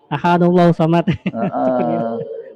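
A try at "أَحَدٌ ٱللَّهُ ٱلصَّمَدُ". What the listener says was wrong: Bukan ahadullahu samad ya. Ahadunillahus. Dunillah. Qul huwallahu ahadunillah. Karena nun iwat. Ada tanwin ketemu hamzah wasal. Nah, ketika waqaf, qul huwallahu ahad, Allahus samad. Tapi kalau wasal, qul huwallahu ahadunillahus samad.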